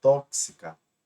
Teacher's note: Tóxica, são 3 sílabas e melhor dizendo, a antepenúltima é a mais forte. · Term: proparoxítono